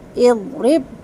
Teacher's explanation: ضاد کو ہول رکھنا ہے، دال جیسا اضرب نہیں پڑھنا